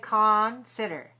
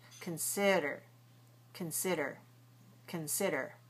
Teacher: Now, don't say consider. The first syllable is a schwah or i. Con. Very short.